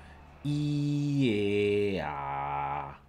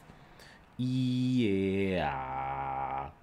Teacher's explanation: the vowel e has your tongue very close to the roof of your mouth. In a, it's towards the middle. And then in a, your tongue is resting towards the bottom of your mouth. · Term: height of the vowel